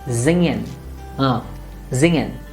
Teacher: You don't have to separate the N and the G to make zingen. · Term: nasal sound